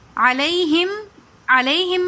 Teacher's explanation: علیہم، علیہم میں جو یا آ رہی ہیں یہ یائی لین ہے، یا ساکن ہو اور اس سے پہلے زبر ہو تو وہ یائی لین کہلاتی ہیں، اس کو نہیں کھینچتے